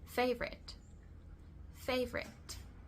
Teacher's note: it has two schwas in the second and third syllable · it has 2 schwas in the second and third syllable. The first one, the A, it's the combination of A, it's an A, fe, and then the 2 final syllables are schwas, favorite, It is difficult for us, or it may be difficult for us, because it can be spelled in different ways. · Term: schwa sound